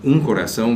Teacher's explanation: Another exception is the class of words that end in the nasal diphthong own. You see the final O, but it doesn't really end in O, it ends in own.